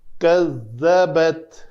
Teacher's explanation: زال کی ادائیگی کے لیے زبان جو ہے وہ دونوں دانتوں کے درمیان باہر سننے والے کو نظر آنی چاہیے